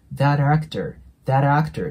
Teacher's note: あげてもいいので▁She's▁obsessed▁with▁っていう感じの音になります。ここもね、しっかり上下の歯で▁TH▁の音を出すように意識してください。で、最後の▁that▁actor▁なんですけど、まず▁that▁なのでね、これも▁th▁なので上下の歯で下を挟んで▁that▁になるんですけど、この最後の▁t▁ですね、これ破裂音になるので、基本的に次に母音が来ないときは音がなくなります。で、母音が来るときは音がリンキングするんですけど、破裂音の中でも▁t▁は少し特別で、 t▁の後に母音が来ると▁t▁はラ行っぽくなるんですね 。なので、これ単純にリンキングすると▁that▁actor、actor▁っていうね、t▁の音でリンキングするんですけど、t▁はラ行になるので、that▁actor,▁that▁actor▁っていう感じで、ラの音になるんで